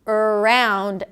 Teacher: I might anticipate the R sound - 'uh-round', and the schwa is going to be affected.